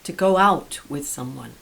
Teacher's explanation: notice the stress is on the preposition out